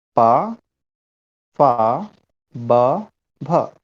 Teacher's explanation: तो आप देख रहे हैं कि हमारे जो ओष्ठ हैं वो आपस में मिल रहे हैं। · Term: ओष्ठ वर्ण